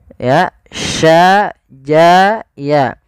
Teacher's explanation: Kita sesuaikan makhraj daripada huruf shin. Makhrajnya adalah tengah lidah kita. Ja, sya, ya itu tengah lidah.